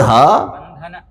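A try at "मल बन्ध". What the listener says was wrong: नकार नहीं होगा, हाँ, दुखतादि विरुद्धम,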